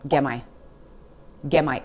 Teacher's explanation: That T sound at the end of get completely disappears and the words just kind of melt into each other